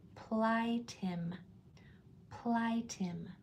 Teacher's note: Again, my lips are closed at the end.